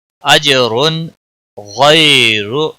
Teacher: تنوین کے بعد حروف حلقی کا غائن آیا ہے اس لیے یہاں پر اظہار حلقی ہوگا۔ اجر غیر تنوین کو ظاہر کر کے پڑھیں گے، غیر یالین ہے تھوڑا نرمی کے ساتھ کھینچ کر پڑھیں گے، راک کو پیش کی وجہ سے موٹا پڑھیں گے۔